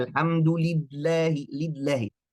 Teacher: Ini gak ada sifat inhiraf, gak ada tawassul. Itu baca lamnya dengan syiddah. Kenapa? Karena kuwatul i'timad, ya.